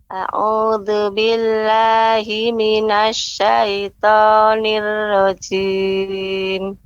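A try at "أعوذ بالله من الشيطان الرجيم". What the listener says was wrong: Kemudian tadi Ibu pengucapan a'u jangan terlalu cepat. A'udzu. Demikian Ibu. Sekali lagi.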